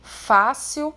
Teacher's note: fácil é um exemplo de paroxítona, porque a sílaba mais forte é a penúltima, é a sílaba acentuada, aqui no caso, fácil.